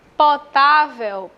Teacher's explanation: penúltima sílaba mais forte é paroxítona